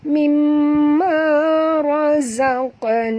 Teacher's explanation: huruf qaf ini mati di tengah-tengah kalimah. Jadi kita kena lantunkan dia qalqalah sughra